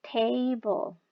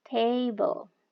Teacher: Kalau teman-teman misalnya mengucapkan kata table, itu pasti kan ada stress. Stressnya itu ada di syllable pertama, yang artinya nanti grafiknya itu harus dari atas ke bawah.